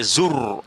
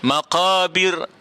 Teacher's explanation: zur, yang itu ra-nya tebal, maqabir ra-nya nipis